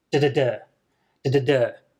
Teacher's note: So you got strong, weak, weak, strong.